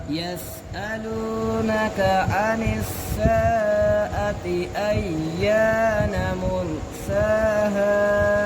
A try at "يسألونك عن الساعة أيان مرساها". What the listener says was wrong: आपने साआती को ज़्यादा लंबा किया है